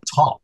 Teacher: In top, in English, we have that little puff of air that we call aspiration. It's aspirated.